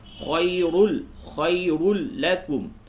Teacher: وَتُؤْتُوهَا الْفُقَرَاءَ فَهُوَ خَيْرٌ لَكُمْ، خَيْ یا ساکن کے بعد پہلے والے حرف پہ یا ساکن سے قبل زبر ہے، تو یا ساکن سے قبل جب زبر ہو تو وہ یا لین ہوتی ہے، اس کو نرمی کے ساتھ پڑھتے ہیں